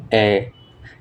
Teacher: জিভ একটু উঁচু হই, তবে সামনের দিকে থাকে জিভ এবং ঠোঁট প্রসারিত হই এবং বেশি খুলে। ঠোঁট অনেকটাই খুলে।